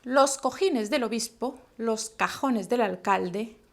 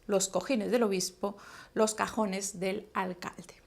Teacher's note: el trabalengua número 1 era para que ustedes prestaran atención al sonido velar o uvular sordo, ¿sí? Aspirado.